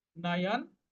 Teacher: এই শেষে যে দন্ত নটা আছে এটা কিন্তু অর্ধেক উচ্চারণ হবে